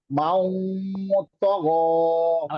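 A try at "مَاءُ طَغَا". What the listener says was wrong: আর ওয়াও যেন না হয়ে যায়। মাও তগ।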